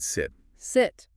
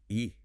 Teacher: It's kind of relaxed. More in the middle than the long I sound you use for the letter name. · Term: short sound of I